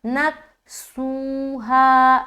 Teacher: سو میں واو مدہ کر رہے اور ہا میں الف مدہ، دونوں جگہ برابر کھینچنا ہے